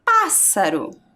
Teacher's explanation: Qual é a sílaba mais forte de pássaro? É o pás.